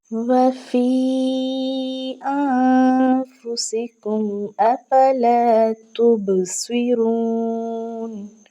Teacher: ہم نے فی کو کھینچ کر پڑھا ہے کیونکہ اس کے اوپر مد منفصل ہے۔ تو کیا ہے کہ حمزہ دوسری کلمہ میں آیا ہے اور یائے مدہ جو ہے وہ پہلے کلمہ میں آیا ہے۔